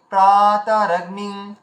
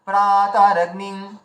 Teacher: তাহলে এখানে আমাদের উচ্চারণ করতে হবে কি প্রাতারগ্নিং। এই যে প্রাটাকে আমরা টানলাম, দীর্ঘ করলাম, বাকিগুলোকে দীর্ঘ করলাম না